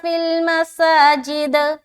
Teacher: یہاں پر مساجد میں رکیں گے تو دال میں بھی قلقلہ ہوگا